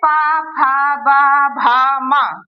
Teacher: ये हमारे होठों से, होठ टच कर रहे हैं एक दूसरे को, तो ये हमारे होठों से बोले जाते हैं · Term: पवर्ग